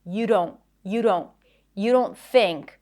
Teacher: The D is flap and you connect it together.